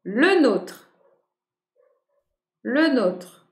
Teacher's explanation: Le E, il ne chute pas.